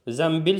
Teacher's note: N samiti B və M samitlərindən əvvəl gəldikdə M kimi tələffüz olunur.